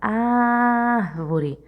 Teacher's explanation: Observe que você demorou mais na sílaba ar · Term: sílaba tônica